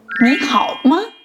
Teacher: The ma is given a neutral tone, making it sound light and short.